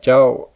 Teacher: In this example, the word jiao begins with a mid-class consonant, jaw, and ends with a vowel, ao. However, since there is a tone marker, maito, this would be a high-falling tone, because any word beginning with a mid or low-class consonant and marked with that tone marker is automatically a high-falling tone.